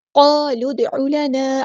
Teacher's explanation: عین کو وسطی لیکن مڈل تھروٹ سے ادا کرنا ہے